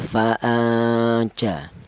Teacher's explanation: Dimana ikhfa ausat itu ikhfa yang bacaannya ada samar juga ada dengung, yaitu sama-sama 50%. Jadi samar dan dengungnya itu sama, tidak ada yang lebih kuat ya.